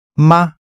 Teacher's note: The syllables here are fourth tone and third tone. Now for the little word in Chinese which makes a sentence into a question when you put it at the end. It's a light or neutral tone.